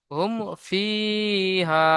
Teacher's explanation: ইজরা বলে দিলাম তো, মিম সাকিনের পরে বা মিম ছাড়া ফা এসেছে, সাকিনের পরে বা মিম ছাড়া ফা এসেছে, তাই মিমকে বিনা গুণা জাহির করে পড়তে তাই হবে। তাই মিমকে বিনা গুণায় জাহির করে পড়তে হবে